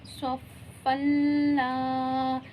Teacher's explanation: یہ دیکھیں لا جو کھینچا ہے یہاں پہ الف مدہ ہو رہا ہے، الف خالی ہے، اس سے پہلے زبر ہے تو الف مدہ ہوا، اسے ایک سے دو مقدار کھینچیں گے۔